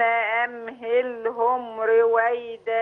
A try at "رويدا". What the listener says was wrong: لا ري لا رو رويدا